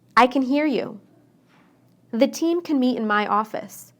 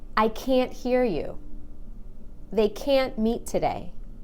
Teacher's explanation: when I say can't I stressed that a and make it really long · It's how the A is pronounced. When I say can inside a sentence, I shorten the A. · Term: the long a, the long A